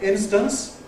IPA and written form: ˈɪnstəns (instance)